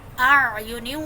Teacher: عین کو میں حلق کے درمیان والے حصے سے نکالوں گی